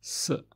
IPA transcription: s